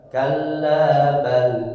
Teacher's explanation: ketika membaca kalla bal berhenti terlebih dahulu karena ada saktah. Saktah itu dari kata sakata artinya berhenti sejenak.